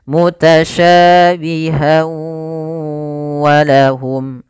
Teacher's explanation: Bila kita bersambung mutasyabiha wa maka berubah menjadi hukum tajwid berupa idgham bighunah. Idgham disertai dengan gunah. Maka masukkan tanwin pada huruf ha. Masuk kepada huruf wau dan ditahan suara wnya.